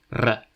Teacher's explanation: this voiced sibilant became a trill, [r], a sound shift known as rhoticization